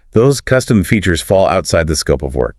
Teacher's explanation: it sounds like a question, which practically begs the client to argue with you. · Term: upward inflection